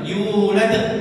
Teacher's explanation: Tidak dengan hamzah tapi dilepas lebih cepat.